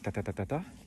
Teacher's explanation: C'est le rythme syllabique typique du français, de l'espagnol, un petit peu mitraillette